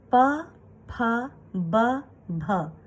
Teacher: प वर्ग का उच्चारण स्थान ओठ है, ओष्ठ है।